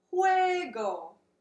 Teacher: first syllable is where and the second syllable is go now the G in Spanish is pronounced kind of like a soft H in English